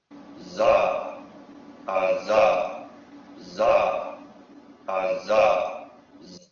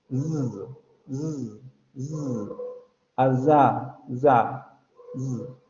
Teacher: El aire solamente sale por el conducto bucal. La lengua sube y prácticamente se pega a la zona de los alvéolos, pero como vean que no se pega tanto como para evitar la salida del aire